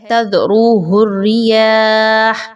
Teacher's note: ہا کے اوپر جب وقف ہوگا، ہا کے اوپر آپ نے جزم لگائی، اس پہ سٹاپ کیا، اپنی آواز اور سانس کو توڑا